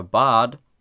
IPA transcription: baːd